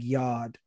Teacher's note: it's a non-rhotic language, so we drop our R's. And so yard would be like yod. And that also pertains to when there is an R, when there is an R in a sentence, we might just either drop the R and double the vowel, drop the consonant and double the vowel.